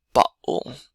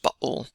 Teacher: So don't actually pronounce the T, but just bottle. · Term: glottal stop